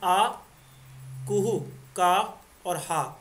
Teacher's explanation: आ, कुहु, का और हा कंठ से बोले जाते हैं